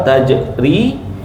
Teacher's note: Jim ada qalqalah kecil ya. Qalqalah sura.